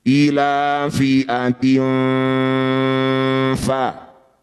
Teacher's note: Jadi ikhfa itu samar, awsat itu pertengahan. Jadi bunyinya antara kasroh dan fa, di tengah-tengah. Ketika dengung, ujung gigi atas sudah nempel di perut bibir bawah. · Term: ikhfa awsat